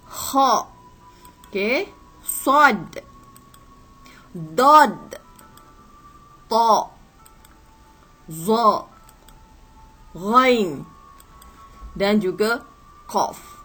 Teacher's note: suara tinggi dengan lidah terangkat ke langit-langit ketika menyebut huruf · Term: huruf isti'la